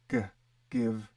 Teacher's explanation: that's that velar in the back of the mouth